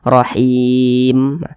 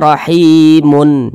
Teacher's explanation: Ketika kita berhenti pada huruf mim kita sukunkan. Jangan dibaca rahimun, jangan, tapi dibaca rahim.